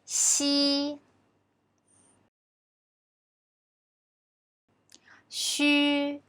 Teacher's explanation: Remember, they are all voiceless consonants. I'm sure you know the reason, right? Because when we pronounce them, our vocal cords don't vibrate.